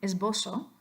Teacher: So yeah, what I'm saying here is in General American Spanish, in this word, esbozo, the S sounds like a Z, and the Z sounds like an S